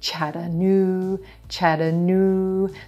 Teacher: the third syllable this is where our stress is we're going to emphasize the Blue Moon ooh vowel